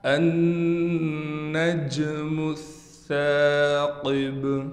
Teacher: نون پر ہم غنہ کریں گے، نون مشدد ہونے کی وجہ سے